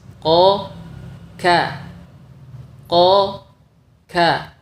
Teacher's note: makhraj huruf q lebih dalam dari makhraj huruf Kaf sehingga harus menghasilkan suara yang berbeda dari kedua huruf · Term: qaf